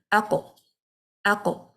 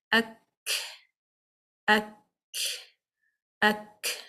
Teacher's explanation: The sound is imprisoned. You need to disconnect the tongue from the palate, but we do not apply the qalqala. We apply the hums, means the flow of an air. Ak, ak, ak, like that.